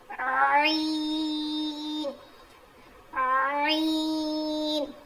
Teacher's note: हलक के बीच वाले हिस्से से अदा होता है। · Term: आईन